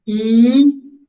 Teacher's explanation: I, es como la boca se extiende a los lados, entonces es una vocal cerrada.